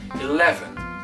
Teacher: dès qu'on dépasse les deux syllabes il y en a une d'accentué eleven on va insister sur la deuxième